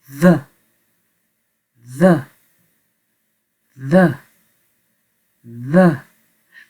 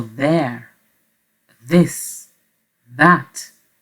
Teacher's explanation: on garde notre langue dans la même position que le θ, th, mais avec des vibrations plus légères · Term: TH léger